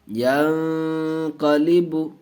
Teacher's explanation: نون ساکن کے بعد حروف اخفاء کے 15 حرفوں میں سے قاف آیا ہے، اس لیے گنہ کر کے پڑھیں گے